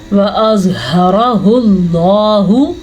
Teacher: زوا کو پر پڑھنا ہے کیونکہ زوا حروف مستعلیہ میں سے ہے. ہا کو سینے سے نکالنا ہے, اس کو ہا نہیں پڑھنا, اس کو خا بھی نہیں پڑھنا, اس کو ہا پڑھنا ہے.